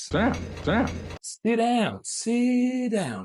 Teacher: because we've connected everything, we got the flap T. And thus, it sounds sit down, not sit down.